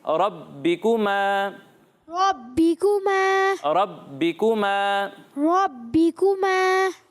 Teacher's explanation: جی اسی طرح یہاں با پر تشدید ہے اور با حروف قلقلہ میں سے, تو اسے جماؤ کے ساتھ پڑھنا ہے